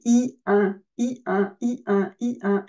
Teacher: je ne change pas mon articulation c'est la base du son I qui me donne le son 1 c'est un I qui remonte dans le nez · je tire au coin de mes lèvres le I et donc je me base sur le son I et ce son devient nasalisé